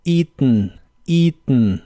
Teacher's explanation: pronuncian el final haciendo un golpe de aire con la nariz y suena como eaten, eaten.